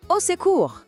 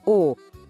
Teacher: O O no começo soa como um O bem fechadinho